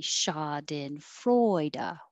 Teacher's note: Freu is secondary stress, so it gets a little longer, but not higher, because we can't be too jumpy in English.